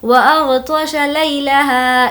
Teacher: لئی کو نہیں کھینچیں گے یہاں پر یا لین ہے